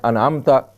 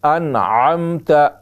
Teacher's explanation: تو عین کو ہم حمزہ بنا دیتے ہیں جو کہ لحن جلی ہے اور وہ حرام ہے۔